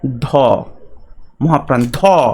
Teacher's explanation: আর মহাপ্রাণ কে আছে? ধ, মহাপ্রাণ ধ, বাতাস বেশি বেরিয়ে যাচ্ছে, বেশি বাতাসের প্রয়োজন হচ্ছে।